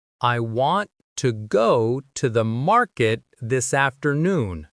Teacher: the stress is on want, go, market, and after. These stressed words are louder and longer, while the other words are weak and short.